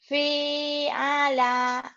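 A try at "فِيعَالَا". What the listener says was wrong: Panjang semua.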